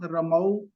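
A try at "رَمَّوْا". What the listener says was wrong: रम्मऊ, शद है ना। हाँ जी, ये शद तो पढ़नी है ना।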